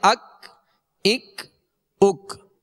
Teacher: ڈنڈی والا کاف تھا جو باریک پڑھا جاتا ہے اور اس میں قلقلہ نہیں کریں گے